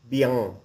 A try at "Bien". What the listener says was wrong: Bien sounds like Québécois, like French Canadian. Bien.